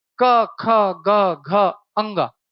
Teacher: क्योंकि इनको बोलते समय ध्वनि कंठ से आ रही है और कहीं पर भी जीभ एक्शन नहीं ले रही है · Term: कंठव्य